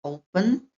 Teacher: Ini satu vowel, kemudian satu konsonan. Tetapi karena penekanan katanya, pengucapannya ada pada suku kata pertama itu O